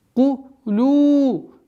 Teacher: Долгота в размере двух огласовок даммы. Удлиняем, естественно, удлинение.